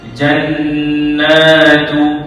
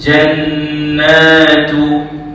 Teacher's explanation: Jan yang pertama tu kena dengung sebab kewajipan ghunnah. Na tu pula panjang 2 harakat.